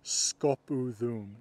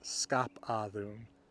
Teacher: when you've got an A between the mutating U and the mutated hooko, that A is also going to turn into a U.